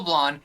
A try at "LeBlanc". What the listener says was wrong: it's not the French pronunciation it's LeBlanc